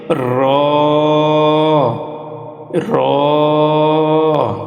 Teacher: জিহবার আগার উল্টা পিঠ তার বরাবর উপরের তালুর সঙ্গে লাগাইয়া একটি হরফ উচ্চারিত হয়